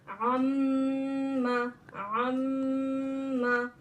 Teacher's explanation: आइन को मीम में मिलाएंगे, एक अलिफ की मिकदार गुन्ना करेंगे।